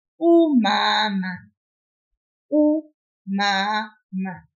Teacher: I pull that first M-A a little bit, but I didn't pull the other M-A.